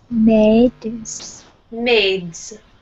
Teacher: try to connect your consonants more, the D and the S.